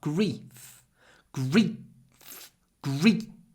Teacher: I hope you can hear the difference in the vowel sound. Grief, the vowel is short before an unvoiced f.